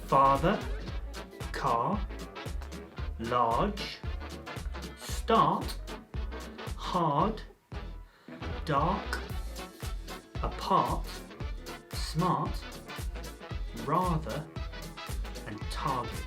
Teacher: It's technical name is the 'open back unrounded vowel' sound. · name is the open back unrounded vowel sound this means that when you produce it your mouth is open the back of your tongue is low and towards the back of your mouth and your lips are unrounded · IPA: /ˈfɑːðə/, /ɑː/